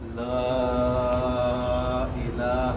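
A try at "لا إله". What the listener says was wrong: اور تھوڑا کھینچنا بھائی صاحب، بھائی بہترین کھینچ رہے ہیں، ذرا پھر کھینچیے آپ.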